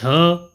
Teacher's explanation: जो झ वर्ण है वह सघोष और महाप्राण होता है।